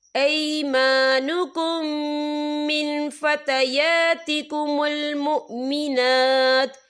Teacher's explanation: یا دیکھیے ایمانکم، یہاں میم ساکن ہے، میم ساکن کے بعد جو ہے میم مشدد والا حروف آ رہا ہے، تو یہاں پر ادغام شفیع ہوگا، ہم پچھلے میم کو اگلے میم میں مدغم کریں گے، اور ہم یہاں غنہ بھی کریں گے